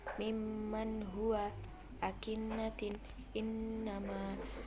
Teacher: Nun dan mim tasydid harus dibaca dengung kira-kira satu alif atau dua harokat.